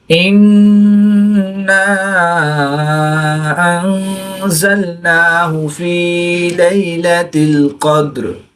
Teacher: نون مشدد میں ہمیشہ غنہ ہوتا ہے، تو یہاں پر ہم غنہ آنی کر کے پڑھیں گے۔ الف مدہ کے بعد حمزہ دوسرے کلمے میں ہے، تو یہاں پر مد منفصل ہوگی، 2 سے 3 الف تک کھینچ کر پڑھیں گے۔